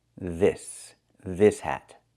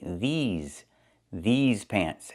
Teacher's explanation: I use a long e like green beans plus the zz sound like in zebra with a voice vibration. Zz these. these pants.